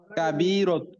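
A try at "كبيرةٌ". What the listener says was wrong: কাবি রতু কেন? রতুন বলেন, তানবিন দেন।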